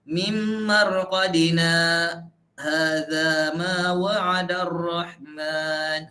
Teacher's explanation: Itu dia satu nafas tapi berhenti dua harakat. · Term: saktah